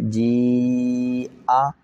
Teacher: یہاں جیم یا زیر جی، ایک الف جتنا، آگے جو حمزہ زبر آ ہے اس کی وجہ سے جی آ مد ہو جائے گی